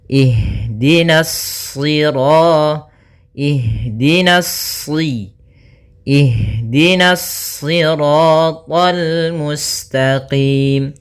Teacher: nanya tipis shadnya baru yang ditebalkan